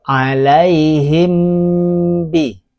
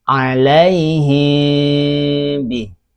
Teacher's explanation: Mim sukunnya tidak boleh jelas. Dia harus samar ikhfa. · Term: ikhfa syafawi